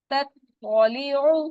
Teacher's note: त बारीक है, पौ मोटा है ऊंचा, और फिर आइन मोटा